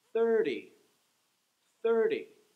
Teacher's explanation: It would be the first syllable that gets the stress.